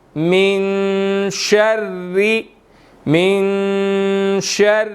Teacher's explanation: اب یہاں پر نون ساکن ہے تو یہاں پر اخفا ہوگا